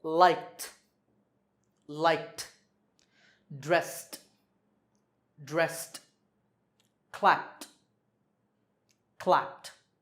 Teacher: So when the last sound is voiceless, we say t for the ed ending.